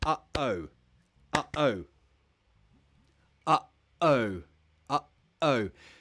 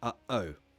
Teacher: can you feel in the middle of the word your throat closes up your throat will close to make that up sound uh-oh when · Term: glottal T